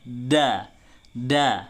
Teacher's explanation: Seakan-akan ujung lidahnya itu diletakkan di gigi. Da, itu salah, itu kurang tepat. Tetapi harusnya diletakkan di gusinya. Da, sesuai dengan makhrijul hurufnya.